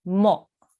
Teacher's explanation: So what I want you to be really careful about is you're not joining to the waw and you're not saying a meme with a dhamma. You are saying a meme with a dhamma, which you then have to join to a Hamza Sakin. So you have to make a soft jerking sound there